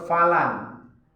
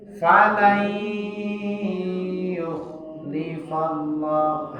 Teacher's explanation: jangan kita baca falan, tapi falai yukhlifallah, harus berdengung. Kalau dia hanya sekadar baca falai yukhlifallah itu belum berdengung ya. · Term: idgham bi'una